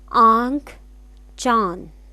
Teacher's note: यह अनुनासिक है इसका उच्चारण नाक व गले से किया जाता है